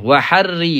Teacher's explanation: Jangan waharri. Ri tu tebal. Ra kena nipis. Sebab apa? Sebab bagi bawah.